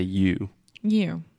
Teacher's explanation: we're really exaggerating the circle that we make with our lips at the end